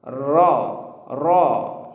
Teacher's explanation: adanya ujung lidah bertemu dengan langit-langit yang ada di depan ya yang ada di atas gusi · ya lidah menempel sehingga masih ada sedikit ruang roll roll ya dan getarannya sekali saja tidak perlu berlebihan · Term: huruf ro